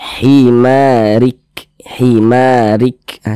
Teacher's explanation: ada nafas yang mengalir tapi seperti memercik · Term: sifat Hamas